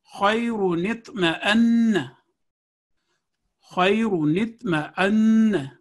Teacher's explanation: یعنی اگر دو لفظوں کو ملا کر پڑھیں گے تو یہ نون صغیرہ پڑھا جائے گا, لیکن پہلے لفظ پر وقف کرنے کے بعد دوسرے لفظ کو پڑھیں گے تو اس نون کو تلفظ میں شامل نہیں کریں گے. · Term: نون قطنی